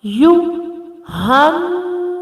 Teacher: You, hannasu, ha fatta with noon. We match directly ha fatta with noon and we do gunna at noon.